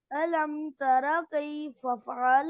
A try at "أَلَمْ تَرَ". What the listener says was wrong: ترى را मोटा करे.